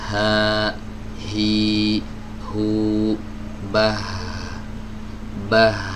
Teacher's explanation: Huruf ha ini dia selalu terbuka. Ya, pita suaranya selalu terbuka, baik dia dalam kondisi bersukun atau berharokat. Ya, ha, hi, hu, bah, meskipun dia sukun, dia tetap kebuka, nggak rapat seperti huruf hamzah.